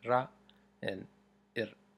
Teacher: the tip of the tongue kind of starts near the top and then makes a single flick down and then comes back up